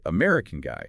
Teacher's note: Sometimes the nationality gets the stress like American guy.